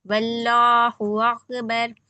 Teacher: यहाँ पे लाम को लाम जलाला मोटा पढ़ेंगे।